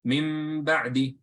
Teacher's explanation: So I apply ghunna, I hold the sound in my nose a little bit.